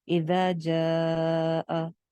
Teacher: اذا جاء، اب جاء ایک الف تھا نا، الف مدہ تھا، لیکن آگے حمزہ آ رہا ہے تو ہم نے اس کو 2 الف لمبا کر دیا ہے